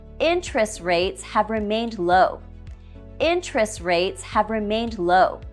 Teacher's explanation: we dropped the T in interest